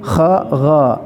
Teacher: Kha ada ngoroknya, ada getarannya